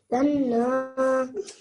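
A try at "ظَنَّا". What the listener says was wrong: Zanna. You pronounce the zo very nicely. When you join it onto the noon, you've got to press down on the noon, make the gunna sound for 2 seconds, and then add the fatha at the end. Zanna.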